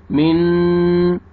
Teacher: मीम ज़ेर नून जज़म मिन, नून साकिन के बाद हरूफ इख्फा में से शीन आ रहा है, आपने इख्फा करना है, नाक पे आवाज़ लेके जाएंगे।